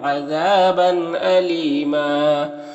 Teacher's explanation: دال میں یہاں پر قلقلہ ہوگا، نام الف مدہ ہے، میم میں اظہار شفوی ہوگا، دال کو باریک پڑھیں گے، یہاں پر الف مدہ ہے اور یہاں پر تنوین کے بعد حمزہ ہے حروف حلقی میں سے تو تنوین میں اظہار حقیقی ہوگا، تنوین کو ظاہر کر کے جلد پڑھیں گے۔ یہاں پر یا مدہ ہے اور یہاں پر دو زبر ہے، وقف کریں گے تو ایک زبر کے ساتھ الف پڑھیں گے، اس طرح سے۔